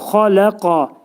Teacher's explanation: Bu qaf hərfinin məxrəci dilin sonu və dilçəyin başlanğıcındadır. Xaləqani dedikdə qaf və kəf hərflərinin hibridi şəklində deməliyik.